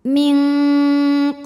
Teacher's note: tingkatan dengung ikhfa abad karena nun sukun menghadapi huruf q maka nunnya dibunyikan samar-samar siap-siap menuju makhraj huruf q disertai bunyi dengung bunyi dengungnya banyak bunyi yang masuk hidungnya banyak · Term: ikhfa Hakiki, ikhfa hakiki